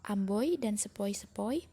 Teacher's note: Diftong naik menutup maju OI